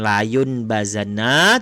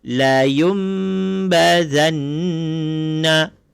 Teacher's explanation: Ini nun mati bertemu dengan ba. Jadi bila ada nun mati bertemu dengan ba, maka kena tukar kepada bunyi mim. Kita letak mim dekat sini.